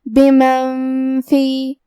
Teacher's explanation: فا حروف الاخفاء میں سے ہے تو ہم یہ حکم کو غنہ کے ساتھ ادا کریں گے، بمن فی۔ کلمت الارض میں یہاں حرف الضاد ہے اور ضاد کی ادائیگی زبان کے کروٹ اور اوپر کے داڑھوں کی جڑ سے ہے، اور کیونکہ ضاد حروف تفخیم میں سے ہے تو ہمیں یہ حرف کو بھاری آواز میں منہ پھلا کے ادا کرنا ہے۔